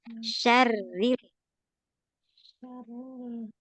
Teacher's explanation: Pada kata syarril ya rnya tipis.